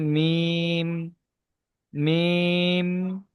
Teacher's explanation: দুই ঠোটের শুকন অংশ মিলিত হয়ে উচ্চারিত হয় মিম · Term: 15 নাম্বার মাখরাজ, 15 নম্বর মাখরাজ